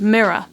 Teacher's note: In the middle of the word mirror, there's actually a pronounced rhotic R, where there's a vowel sound following the R, so therefore we do say the R sound. But at the very end of the word mirror, there's this R which is silent and dropped off because it's not followed by any vowel sound. Additionally, again, at the end of the word mirror, we have the schwa sound, this vowel that's very relaxed and neutral. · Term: non-rhotic R